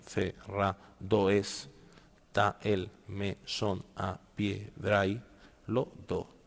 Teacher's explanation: Contaríamos 1, 2, 3, 4, 5, 6, 7, 8, 9, 10 y 11. Está y el, ¿por qué no se juntan? Porque está lleva acento